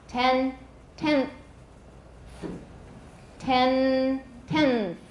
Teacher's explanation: 后 面 有 th 的 时 候， 舌 头 会 提 早 吐 出 来， 所 以 n 就 变 成 interdental， 受 到 它 的 影 响。 · my tongue will get ready to make that th and it's going to stick out early. It's going to stick out before it's time. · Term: assimilation